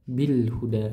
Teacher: lam ta'rif di sini dibaca. Kenapa? Karena bertemu dengan huruf ha. Makanya dibaca jelas ya. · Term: izhar qamari